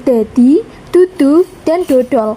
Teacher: Nah, selanjutnya ada fonem D yaitu hamba dental atau alveolar bersuara. Nah, fonem D ini dihasilkan ketika ujung lidah menyentuh gusi atau bagian belakang gigi atas kemudian udara dilepaskan. · Mengapa terdengar lebih tegas? Karena saat mengucapkan huruf D, penutur Tegal memberikan tekanan lidah yang lebih jelas sehingga bunyinya terdengar lebih mantap.